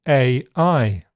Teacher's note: You can also hard attack both syllables, giving AI. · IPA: [ˌʔeɪ ˈʔʌɪ]